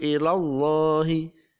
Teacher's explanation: Lafaz Allah lam jalalahnya ini dibaca tafkhim atau tebal, tidak ilallahi, tapi dibaca ilallahi, dibaca tebal atau bacaan tafkhim.